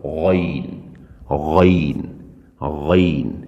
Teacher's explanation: اس کے بعد لفظ ہے غین، غین حلق کے اس حصے سے جو منہ کی جانب ہے ادا کریں گے، حلق کا وہ والا حصہ جو آگے کی طرف ہے اس سے ادا ہوگا